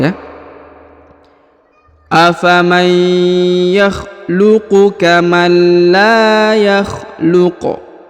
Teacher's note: apabila sukun Huruf Q maka harus dibaca pantul atau Qalqalah · Kemudian huruf qaf karena dia berada di ujung ayat atau di ujung bacaan, maka kita qalqalahkan, kita sukunkan. Dan apabila sukun huruf qaf, maka harus dibaca pantul atau qalqalah ya. Karena huruf qaf salah satu daripada huruf-huruf pantul atau disebut huruf qalqalah ya.